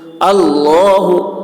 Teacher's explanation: अल्लाह का लाम पुर होगा